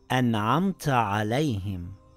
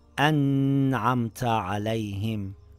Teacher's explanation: Now, if there is a noon sakin or tanween followed by these six throat letters, which are known as letters of idhar, then you pronounce the noon or tanween clearly without ghunna or ikhfa